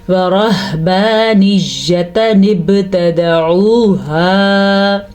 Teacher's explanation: با کے اوپر کلکلا ہو رہا ہے کیونکہ با کے اوپر ساکن آ گیا ہے